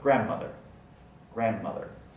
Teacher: we don't say the d in grand mother